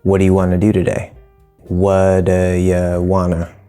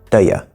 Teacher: So do as a helping verb, not as a main verb, here it's making the question, usually becomes duh.